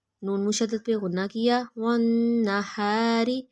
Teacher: نون مشدد پہ غنہ کیا